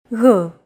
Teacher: It's like a very soft, continuous, and loosely held G, almost as if you're gargling, but don't make it sound too throaty.